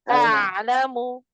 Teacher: tawasud bainnya, hanya sebagian yang mengalir